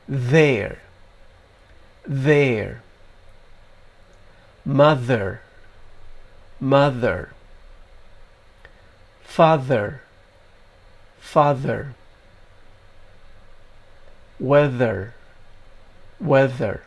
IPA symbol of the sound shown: ð